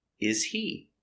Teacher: The H is silent. He is not stressed. When you link the words, don't pronounce the is he?